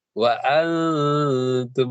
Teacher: Nah, karena dia huruf ta, maka dia lebih banyak dengungnya. Jadi waktu menyebut nun, lidah itu sudah naik di pangkal ya atau gusi depan gigi atas. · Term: ikhfa hakiki